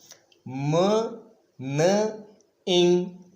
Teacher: ये स्टॉप्स हैं, ये फ्रीकेटिव्स हैं और ये नेजल्स कहलाते हैं। यानी जब हम इन्हें प्रोड्यूस करते हैं तो हम अपने ब्रेथ को नोज की तरफ ट्रांसफ़र करते हैं। म न इंग, ये जो पहली 2 साउंड्स हैं ये समझना आसान है, लेकिन जो थर्ड साउंड है ये वो साउंड है जो ये कम्बिनेशन प्रोड्यूस करता है।